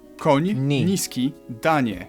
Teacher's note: You start with an N and soften it to ni.